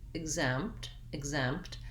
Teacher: i'm not really doing a loud p sound because my lips are already closed for the m